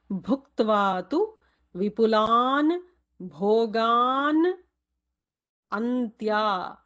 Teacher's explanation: Bhu is a Mahaprana there.